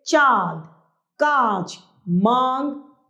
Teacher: अनुनासिकों को चंद्र बिंदु कहते हैं। इसका उच्चारण मुंह और नाक से होता है।